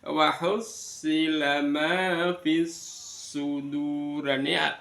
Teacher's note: alnya langsung masuk ke dalam sod